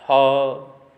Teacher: जो हा है वो कंठ्य वर्ण से उच्चारित होने वाला होता है, हा। ये चारों ऊष्म व्यंजन होने से विशिष्ट माने गए हैं।